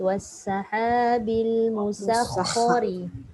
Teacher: Sin betul dah nipis. Kha tebal pula. Kena tebalkan kha, sin nipis.